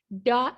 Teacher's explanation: the tongue tip touches the alveolar ridge, the ridge immediately behind the upper teeth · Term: alveolar consonant